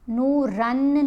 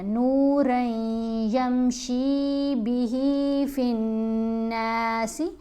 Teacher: را کو یا سے ملانا ہے اور غنہ بھی کرنا ہے